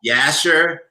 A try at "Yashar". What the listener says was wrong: Yashar. It's you just gotta roll your R just a little bit.